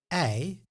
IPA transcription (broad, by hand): ɛi